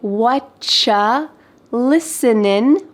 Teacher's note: we're cutting off that final G